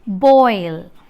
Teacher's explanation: Hence, this diphthong is described as a glide, back rounded, back rounded vowel between open and half open to a front unrounded vowel just above half close